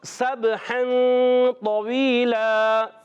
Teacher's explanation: سین سیٹی کے ساتھ ادا ہوگا. سب اور سین کو با سے ملا دیں گے.